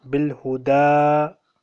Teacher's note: This ya is silent here. Bilhuda. Because ya does not have any vowel.